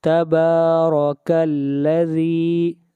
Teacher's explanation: تبارک الذی، ذی، ذال کو کھینچ کر پڑھیں گے، ایک الف کے برابر